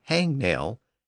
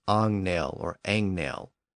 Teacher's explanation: it was simply being mispronounced as Ang nail or Ang nail people often drop the H at the beginning of words anyway